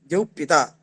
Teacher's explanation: द्यौः में जो विसर्ग है उसका कुप्पो कपौच से पवर के परे रहते उपध्मानी आदेश हो गया, तो इस उपध्मानी से बाद जो पवर्ग है, तो इस द्यौः पिता, तो ये प के पहले जो उष्म उपध्मानी है उसके उच्चारण में वायु की सी ध्वनि होती है, इसलिए वायुपिंड है द्यौः पिता।